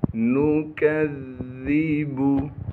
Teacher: کاف کو آگے ذا سے ملائیں گے کیونکہ ذال پر تشدید ہے۔ تشدید ہونے کی وجہ سے تھوڑا سا ٹھہراؤ رکھیں گے، اور ذا کو نرم کر کے پڑھیں گے کیونکہ ذا نرم حروف میں سے ہے۔